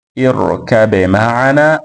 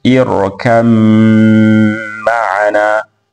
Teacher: kwa kuidhihirisha ba kwenda katika herufi ya mim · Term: idhhar